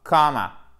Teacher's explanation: C'est une voyelle longue ici qui ne se prononce pas comme un A long. C'est entre le A et le O, mais c'est plus proche du A.